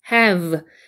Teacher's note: V 발음은 아랫입술의 윗니를 살짝 얹고 여기 단수 불듯이 떨려야 됩니다. have 할 때 여기가 떨리면서 간지러워야 그게 정확한 V 발음이에요.